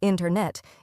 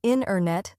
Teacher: The T sound gets softer or disappears. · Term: dropped sounds